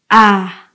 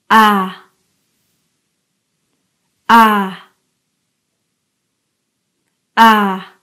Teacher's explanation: Let's first learn how to make the sound ah. Now, as you can see, my tongue is very low and my chin as well.